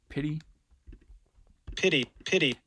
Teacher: you can kind of hear it doesn't really sound like a stop like a d